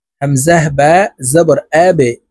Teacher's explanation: বা হরফকে নিচের দিকে ধাবিত করে ধাক্কা দিয়ে উচ্চারণ করতে হবে কারণ বা কলকলার হরফ